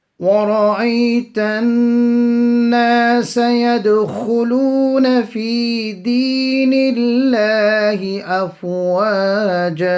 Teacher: Here again the Ra will be read full because of the fatah on it. Ghunna on the noon, and straight after we have a maddi asli that will be made long for 1 second. Qalqala on the dal, small echo sound on the dal.